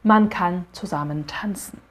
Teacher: Todas as palavras têm um A abertão.